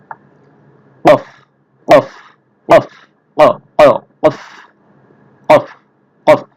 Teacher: জিহ্বার গোড়া তার বরাবর উপরে তালুর সঙ্গে লাগাইয়া উচ্চারিত হয় একটু মোটা করে উচ্চারণ হবে কফ কফ কফ কফ কফ জিহ্বার গোড়া তার বরাবর উপরে তালুর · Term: চার নাম্বার মাখরাজ